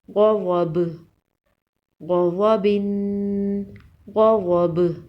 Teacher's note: وقف کی صورت میں با پر قلقلہ ہوگا۔ با حروف قلقلہ میں سے ہے۔